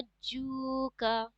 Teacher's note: جیم ملا کے پڑھیں گے اس میں قلقلہ کی ساؤنڈ آئے گی